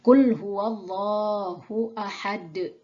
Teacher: Maka domah tanwin dibaca sukun. Kemudian qalqalahnya harus ditampakkan.